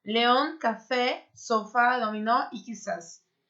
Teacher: Terminou dessa forma, a última sílaba é a mais forte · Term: oxítonas